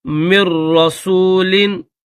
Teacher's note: نون کی آواز بالکل نہیں نکالنی